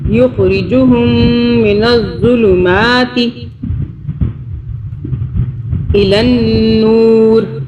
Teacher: نون کے اوپر بھی تشدید ہے تو یہاں نون پہ بھی ہم اخفا کریں گے، غنہ کریں گے 2 سیکنڈ کے لیے